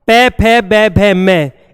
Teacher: इनका उच्चारण होठों के द्वारा होता है, इन्हें ओष्ठ कहते हैं। ओष्ठ ध्वनि, ओष्ठ ध्वनि बोली जाती है, होठों के द्वारा इनका उच्चारण होता है।